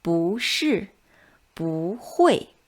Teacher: It changes into the second tone when it's followed by a fourth tone syllable.